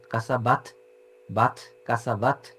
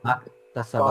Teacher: কাসাবাত হামস দিয়ে বাতাস বের হইছে। কাতা স্পেশাল হামস, আমরা মেক শিওর করবো এটা বাতাস বের হয়, এটা লাহানজালি না, বাট বাতাস যেন বের হয়।